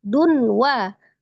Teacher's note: Dunwa, tanwin ya, itu di situ tempatnya dhamma, tanwin ketemu dengan huruf waw. Dhamma tanwin ketemu dengan huruf waw, tanwin ketemu dengan huruf waw, idgham bi gunnah, diidghamkan, ditasdidkan disertai dengan gunnah. Wal alif lam qamariyah disukunkan ke lam, wal ka-nya mad tabi'i alif dibaca 2 harakat.